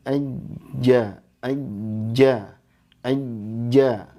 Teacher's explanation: Sifatnya yang pertama jahar, udaranya tertahan, ya, nggak ngalir.